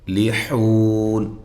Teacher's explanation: ہم المفلحون، یہاں لام ساکن جو ہے اس کو ہلانا نہیں ہے، فا کو بھی نہیں ہلانا۔ لحون، ہا کو واضح نکالنا ہے اور یہ واو مدہ ہے۔ وقف کی صورت میں آپ یہاں مد کر سکتے ہیں، اس کے بعد نون جو ہے وہ عارضی طور پہ ساکن ہو جائے گی وقف کی صورت میں۔